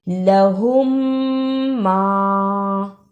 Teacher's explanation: میم ساکن کی آواز کو تھوڑی دیر ناک میں چھپا کر غنہ کرنا ہے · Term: ادغام شفوی